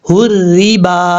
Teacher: रा के नीचे खड़ी ज़ेर है, रा के नीचे ज़ेर है, रा को बारीक पढ़ेंगे क्योंकि जब रा के नीचे ज़ेर हो तो रा बारीक पढ़ा जाता है।